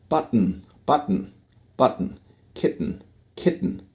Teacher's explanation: closing the airstream at the alveolar ridge, and then letting it through your nose